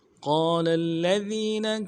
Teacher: قاف کو موٹا کرنا ہے، قاف کے بعد الف مدہ ہے، ایک الف امداد میں کھینچیں گے ، لام کو اگلے لام کے ساتھ ملانا ہے، قال لام